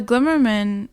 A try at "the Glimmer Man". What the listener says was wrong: Because you're saying Glimmer Man as is his last name. Glimmer Man, not Glimmer Man. The Glimmer Man. You say Spider-Man?